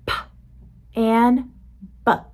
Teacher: My mouth does the same thing for both sounds. The only difference is my voice is off for p and on for b.